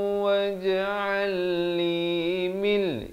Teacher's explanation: idgham bila gunnah, nun mati bertemu lam.